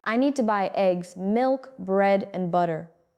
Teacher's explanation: goes up on each item and down on the last one.